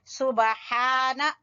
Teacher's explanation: با کے اوپر ہلکا سا کلکلا کریں گے، اور ہا وسط حلق سے